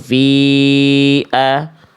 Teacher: Fi di sini panjangnya bukan cuma 2, tapi 4 atau 5. Ada tanda alisnya, simpelnya gitu. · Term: Fi panjang